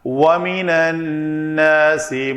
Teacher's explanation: اصل میں یہ حروف شمسی میں سے ہے. نون کی ادائیگی اور لام کی ادائیگی ایک ہی جگہ سے ہو رہی ہے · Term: ادغام